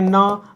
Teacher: पंचमाक्षर में जो ध्वनि होती है वो नाक से निकलती है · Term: अनुनासिक ध्वनियां